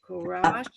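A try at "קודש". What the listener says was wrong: Not a resh. Not a resh. Kodesh. Kodesh.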